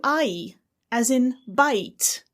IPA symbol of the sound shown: aɪ